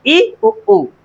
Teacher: ये हमारे आते हैं समृद्ध स्वर। इनके उच्चारण में मुख्य द्वार लगभग बंद हो जाता है